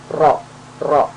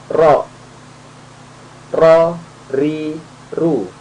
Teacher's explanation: Cara membaca huruf ro untuk mengeluarkan suara ro dari bagian mulut kita itu adalah ujung lidah kita, nah, menempel di posisi gusi dan gigi seri yang bagian atas, tapi menempelnya lebih banyak ke bagian gusi.